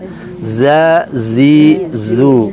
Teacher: Kalau jim di tengah lidah, kalau za di depan ya. Dan kalau za ini ada as-sofirnya, suara tambahan z ya.